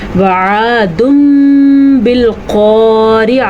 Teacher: यहाँ पे दुन नहीं पढ़ेंगे, दुम पढ़ेंगे और होंठ भी बंद हो जाएंगे, यानी गुन्ने की कैफियत भी पैदा होगी। · रा आपने बारीक पढ़नी है क्योंकि रा के नीचे ज़ेर है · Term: इक़लाब